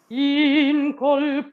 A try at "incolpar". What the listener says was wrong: So, why don't you sing the S? Why? You know what? I tell you one thing. Consonants are our friends. Consonants are very important because they give the electricity to the vowels. They give the energy to the vowels. It's like the racket in the tennis, the consonant.